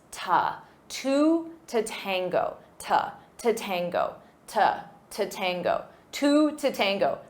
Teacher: Notice for pronunciation we have two words with the exact same pronunciation, the number 2 and the preposition to, but I will not pronounce it as to to. The second to the preposition is unstressed.